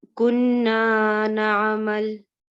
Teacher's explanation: How should we pronounce this alif? It's 2 counts, prolonged 2 counts. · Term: Alif mad